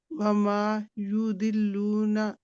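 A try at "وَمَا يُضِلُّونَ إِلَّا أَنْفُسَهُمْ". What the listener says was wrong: दाद मोटा करें, दाल नहीं है, ये दाल नहीं है। यू दिल्लू ना तो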